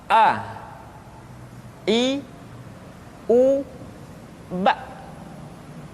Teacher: Makhraj ketika mengucapkan huruf A berada pada tenggorokan yang terjauh